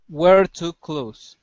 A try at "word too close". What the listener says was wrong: There you go. That's the T sound.